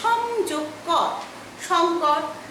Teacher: ময়ের পরে যদি কোনো বর্গধ্বনি থাকে তাহলে ম ওই বর্গের নাসিক্য ধ্বনি হয়ে যায়।